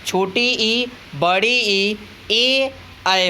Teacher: जिन स्वरों के उच्चारण में जीभ का आगे का हिस्सा उठता है उसे हम अग्र स्वर कहते हैं।